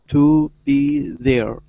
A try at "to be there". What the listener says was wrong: Yes.